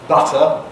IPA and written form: ˈbʌtə (butter)